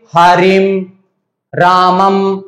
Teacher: तो आपको बताना चाह रहा हूं कि जो अनुस्वार है वो कोई स्वर है, स्वर के जस्ट बाद में एक जो बिंदु आ रही है उसको हम कहते हैं अनुस्वार। अनुस्वार का जो प्रयोग करते हैं वो मकार के रूप में, जैसे मान लीजिए हरिम, रामम, अंत में जो है वो ध्वनि निकल करके आती है वो अम की आती है